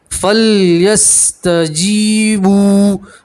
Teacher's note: با کے ساتھ واو مدہ اس لیے الف کے برابر کھینچیں گے